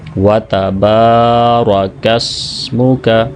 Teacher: با کو 2 سیکنڈ لمبا کریں گے الف مدہ کی وجہ سے